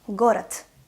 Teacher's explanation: the last consonant, which is voiced consonant in the word город, it's a voiced consonant, becomes voiceless.